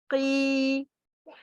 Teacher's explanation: And when I say قيل, قاف كسرة قي, قاف كسرة يا مد قي. The sound of يا مد just is stretching to the sound for كسرة.